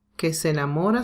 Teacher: Here we have two identical sounds again. But in this case, enamora, the stress is in mo. So we don't say one of the E's.